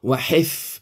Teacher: Wa hifzam, hif ha fa mati bawah, hif jelaskan, hifnya ada angin sikit keluar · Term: ha pedas